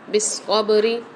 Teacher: با بھی آ رہی ہے ساتھ ساکن والی، تو یہاں پر ہم قلقلہ کر کے پڑھیں گے · بالصبر والصلاة، قاد کے اوپر مشدد آ رہی ہے، یہاں پر اس کو ہم سختی اور جماؤں کے ساتھ پڑھیں گے۔ لام کے اوپر کھڑا زبر آ رہا ہے، تو یہاں پر اس کو ایک الف مقدار کھینچ کے پڑھیں گے۔ والصلاة یہاں پر تا وف کی صورت میں ہاں میں بدل جاتی ہے، تو اس کو ہم تا کو نہیں پڑھیں گے، ہاں پڑھیں گے۔